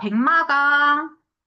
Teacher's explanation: 기역이 미음이랑 만나서 이응으로 바뀐 케이스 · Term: 비음화